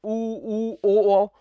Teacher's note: ऊ ओ, तो ओठों की संरचना गोल हो रही होगी।